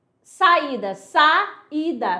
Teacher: Iato quando eu tenho duas vogais que ficam separadas.